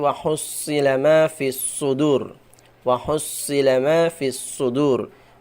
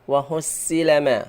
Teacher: shad itu pangkal lidahnya naik itu karena dia mempunyai sifat istiala